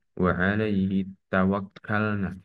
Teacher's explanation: pada tawakkalna terdapat mat tabi'i pada huruf na. Dibaca panjang dua harokat. Karena ada fathah yang berdiri di atas huruf alif ataupun hamzah.